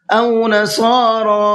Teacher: صاد کو پر کر کے بھی پڑھنا ہے اور کھینچ کر کے بھی پڑھنا ہے